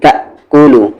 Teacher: حمزہ ساکن ہے یہاں پر آپ جھٹکے کے ساتھ بولیں گے